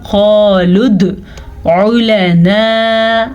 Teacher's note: پھر سے قاف کو موٹا پڑھیں گے، دال پہ کلکلا ہوگا. قالد علنا، عین کو واضح کریں، لام کو لمبا نہیں کرنا جبکہ آگے ہمارے پاس الف مدہ ہے.